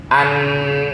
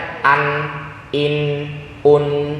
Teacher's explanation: Aliran suara itu dua arahnya. Pertama dari tenggorokan menuju ke ujung lidah. Yang kedua dari rongga hidung. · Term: izhar